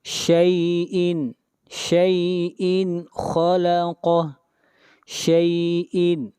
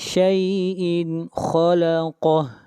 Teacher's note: یہاں پر تنوین کو ظاہر کر کے پڑھیں گے، اظہار ہوگا، تنوین کے بعد حروف حلقی میں سے خا ہے